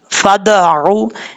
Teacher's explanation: दाल में कलकला करना लाजमी है, दाल हरूफ कलकला में से है, क़ाफ ता बा जीम दाल, ये पांच हरूफ कलकला के हैं, जब साकिन होते हैं इनमें कलकला होता है, तो यहाँ दाल साकिन है, इसमें कलकला करेंगे। फद आऊ, ये जो द की आवाज आ रही ये कलकला है।